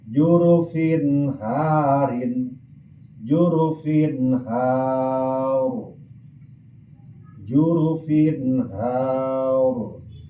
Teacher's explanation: Tanwin anu aya dina fa tanwin kasroh ngaharepan ha maka tanwin macana wajib izhar. Artina dijelaskan suara n suara an.